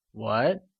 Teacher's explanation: your pitch rising at the end of the syllable like in the interrogative why the falling rising tone or the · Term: mid-rising tone